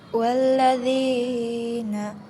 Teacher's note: Yang pertama yaitu alif lam samsiah, alasannya huruf lam bertemu dengan lam. Cara bacaannya diidghamkan masuk ke huruf lam.